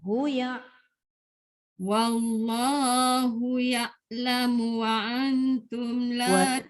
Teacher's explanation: Wallahu satu harakat je hu tu. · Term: hu pendek